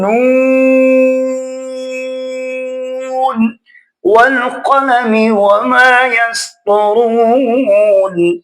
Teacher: اب یہ نون کی آواز بے شک ناک میں جائے، جب لمبا کریں گے تو آواز ناک میں نہیں جانی